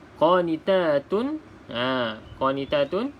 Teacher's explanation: kita baca izhar iaitu jelas dan tak boleh kita baca dengung